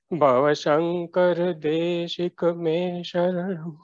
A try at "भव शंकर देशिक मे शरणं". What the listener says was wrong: तमाम Bhava, bha is a mahaprana. Only there I didn't hear your mahaprana in the right way. Bhava Shankara Deshika Mesharana.